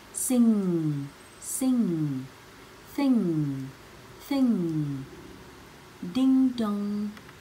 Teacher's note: Âm ngờ nằm sâu trong cuốn họng của mình á.